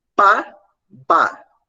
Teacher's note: o lábio superior tá o lábio inferior tocou lábio superior Bah o lábio inferior tocou o lábio superior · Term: bilabial